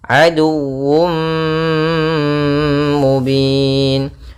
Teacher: tanwin yang dimasukkan ke huruf mim, tapi masih menyisakan suara sedikit daripada huruf tanwinnya. Sehingga di sini idghamnya kita menggunakan dengan idgham naqis. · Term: idgham bi gunnah